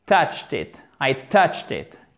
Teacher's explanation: Touched. Le E, vous ne le prononcez pas en fait, ce qui nous arrange parce que du coup, ça fait T à la fin